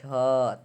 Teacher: झ तालू से आवाज आ रहा है